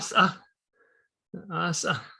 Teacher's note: that glottalization with the S is just kind of slippery and slight and kind of slithers away